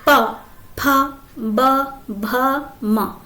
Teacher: अब इनका जो प्रेशर जो पड़ता है, हमारी जो प्राणवायु होती है, दबाव होता है, प्रेशर जो होता है होठों पर पड़ता है, इसलिए इन्हें ओष्ठ व्यंजन कहते हैं।